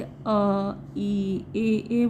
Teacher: तो ओठ अगर आप जैसे अ इ ए बोलेंगे तो ये गोलाकार नहीं होते हैं। ये जो है ऐसे खोलते हैं अ पूरा खोलते हैं।